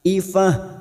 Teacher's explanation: Karena kita wakaf di sini, maka tak marbuta ini kita baca ha